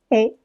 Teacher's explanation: Le phonème E, c'est un phonème ouvert. Il n'existe pas en espagnol, mais son articulation n'est pas trop compliquée pour nous. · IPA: /ɛ/